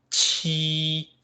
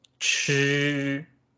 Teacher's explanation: when you do qi, your tongue is pretty much flat, right? And the air comes in front of your mouth. And when you do chi, your tongue is some kind of curved, right? Chi, and the sound is vibrating in the back part of your mouth.